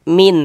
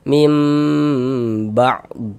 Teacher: Dengan cara merapatkan kedua bibir namun jangan diberikan tekanan. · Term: iqlab